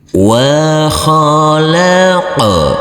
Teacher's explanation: huruf qf harus kita pantulkan karena ini adalah bacaan qalqala huruf qf yang bersukun